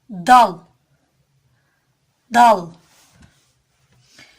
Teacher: dilin ucunu üst ön dişlerin ortasına vurarak çıkarılır